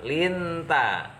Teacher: hukum bacaannya ikhfa Haqiqi karena ada nun sukun bertemu tak cara membacanya samar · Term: ikhfa hakiki